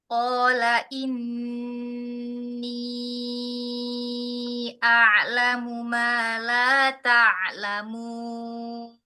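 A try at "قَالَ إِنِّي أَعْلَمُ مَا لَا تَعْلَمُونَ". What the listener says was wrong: Hmm, eh, tidak bukan pertanyaan. Kalau la ta'lamun itu pertanyaan. Jadi ma la ta'lamun pemberitahuan.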